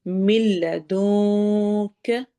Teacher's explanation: نون کو ہم نے چھپا کر لمبا کر کے پڑھنا ہے